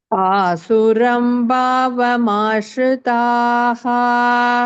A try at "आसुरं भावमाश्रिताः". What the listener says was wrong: भावं no bhavam bha should have mahaprana power.